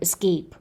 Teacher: If it is another word, escape, it is the second syllable that is stressed. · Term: tonic stress